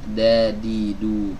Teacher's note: huruf Dal tidak memiliki sifat hams